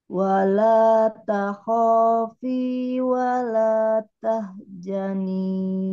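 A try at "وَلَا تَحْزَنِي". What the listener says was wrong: Bukan ja, tapi Z, pakai Z. Nah, gitu.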